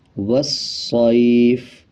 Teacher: صاد یا زبر صائی والصائی فا زیر فی والصیفی وقف والصیف واو کو صاد کے ساتھ ملایا جائے گا، الف اور لام کو سائلنٹ کرے